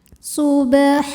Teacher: huruf ba yang sukunnya sukun asli dan ada di tengah bacaan cara membacanya dipantulkan dengan pantulan yang kecil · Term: Qalqalah Sugra